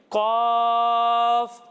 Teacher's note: اسے ہم کھینچ کر پڑھیں گے اور اسے ہم موٹا کر کر پڑھیں گے، یعنی قاف۔ آپ بھی میرے ساتھ مل کر پڑھیے، قاف۔